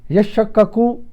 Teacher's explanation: تا اور شین کے مخارج قریب تر ہیں، لہذا قریب المخرج کا قاعدہ دونوں کو ادغام کر دیا گیا۔